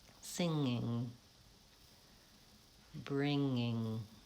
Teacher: actually I don't really raise my tongue as much as I normally would for the ng